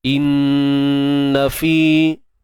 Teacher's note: nun bersabdu tuan-tuan puan kat sini wajibul gunnah, wajib dengung dengan tahapan yang sempurna lah.